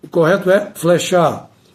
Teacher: O correto é flechar, ou seja, com e aberto.